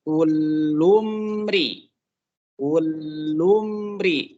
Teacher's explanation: Mim mati ketemu dengan ro. Ini izhar syafawi, jangan ditahan.